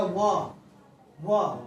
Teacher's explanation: दंत प्लस ओष्ठ यानी दांत और ओष्ठ लगेगा